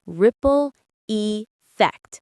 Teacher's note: The stress is on the first syllable of ripple and the second of effect.